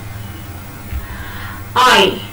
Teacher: I is a glide from a front open unrounded vowel to the front unrounded vowel just above half close.